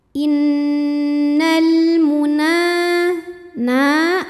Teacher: Mad thii muqaddar karena ada huruf nun yang berbaris fathah panjang cara bacanya panjang nunnya dua harakat